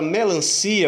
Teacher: A palavra melancia, eu separo o i e o a. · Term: hiato